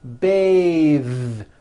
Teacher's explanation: when you change it into a verb to bathe the vowel changes to an a sound and the th is voiced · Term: voiced th